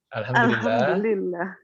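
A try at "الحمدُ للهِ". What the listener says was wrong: Apa? Belum lengkap itu. Harakat terakhirnya apa? Alhamdulillahi. Karena ada lam juga, cuman dia dimasukkan langsung ke lafzul jalalahnya. Lillahi. Aslinya Allahu. Karena ada lam harfu jar, jadi lillahi.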